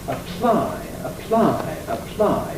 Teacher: apply why is that it's because the p is aspirated and the way you hear that aspiration is in the voicelessness of the following consonant the L · That P is strongly aspirated which must therefore indicate that it's initial in the syllable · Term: L is voiceless